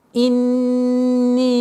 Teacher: удержание назализации нун в размере двух огласовок, после которой долгота в размере четырех огласовок кесру